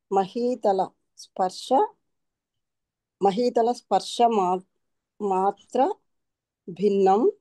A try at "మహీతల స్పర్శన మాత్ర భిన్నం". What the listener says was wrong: మళ్ళీ నా మర్చిపోయి మధ్యలో నా వదిలేశారు.